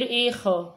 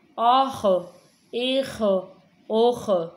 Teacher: یہ خا ہے تو خا کو ہم نے پر کر کے یعنی موٹا کر کے پڑھنا ہے۔